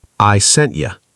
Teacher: And the final piece is I sent you. The word you reduces to ya.